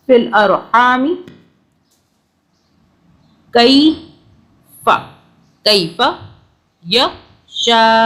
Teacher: الف کے اوپر بڑی مدہ ہے، 6 الف کے برابر کھینچا